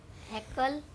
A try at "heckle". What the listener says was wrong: No, not heckle. Kal nahi. Kul.